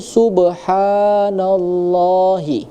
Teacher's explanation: Nah, kemudian di awalnya itu subhanallahi ya, ada kalimat huruf ba yang dia berharokat sukun di tengah ayat. Maka ini tadi hukum bacanya adalah qalqalah sugro, artinya pantulannya itu lebih kecil